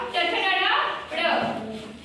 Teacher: उच्चारण करते समय जीभ क्या होती है? मुड़ जाती है और मुड़ करके हमारे ताल को छूती है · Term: मूर्धा